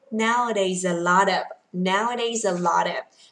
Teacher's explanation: Âm T kẹp giữa hai nguyên âm đọc luôn là đờ luôn, gọi là flap T trong tiếng Anh.